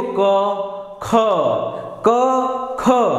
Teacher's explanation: क में जितना हवा मुंह से निकल रहा है उससे ज्यादा हवा जो है वायु वो ख के बोलने में बाहर आ रही है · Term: महाप्राण